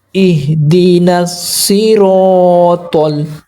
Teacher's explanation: ये जो सौद है इसको भी मोटा पढ़ेंगे, ये जो रा है इसको भी मोटा पढ़ेंगे